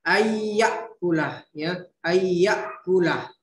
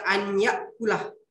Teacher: Nun sukun ketemu dengan ya, itu hukum bacanya adalah idgham bi gunnah. Jadi cara membacanya berdengun